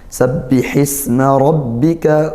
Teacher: ra fathah kita tebalkan karena dia berharokat fathah, tafkhim hukumnya seperti itu dengan menaikkan pangkal lidah tebalnya.